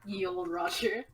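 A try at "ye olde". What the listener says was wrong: Turns out, it's not actually supposed to be pronounced ye old. It's supposed to be pronounced the old.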